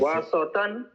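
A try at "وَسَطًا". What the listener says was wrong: So not saw, lighter. A little lighter than that. Wasaton. Ton. Yeah, you were saying wasaton, right? You were saying saw for this one here, which is sa. So I was talking about that. But this one is heavy. The one at the end is heavy. So wasaton.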